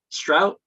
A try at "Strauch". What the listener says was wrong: Very good. It's a K sound on the end, but yep, I'll answer to anything.